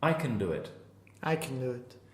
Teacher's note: if we're not stressing the can we change the ah to a schwa